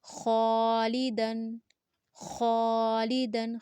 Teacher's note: خا الف زبر خا، لام ذیلی، خالی، دال دو زبر دن، خالیدن، خالیدن، خا کو پر پڑھیں گے، دو سیکنڈ تک لمبا کریں گے، الف مد ہے، خالیدن، خالیدن۔